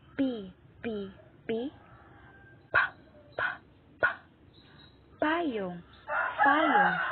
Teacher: Una ay panlabi. Ang panglabi, dumidiit ang ibabang labi sa labing itaas.